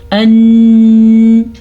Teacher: یعنی نون کے اوپر ہم ٹھہر جاتے ہیں اور آواز خود بخود ناک میں چلی جاتی ہے. آپ کو خود لے کے جانے کی ضرورت نہیں ہے، خود ہی رکنے کے ساتھ، نون کو ادا کرنے کے ساتھ، میم کا غنہ ادا کرنے کے ساتھ آواز ناک میں چلی جاتی ہے.